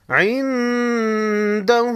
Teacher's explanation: نون ساکن پر اخفاء حقیقی ہوگا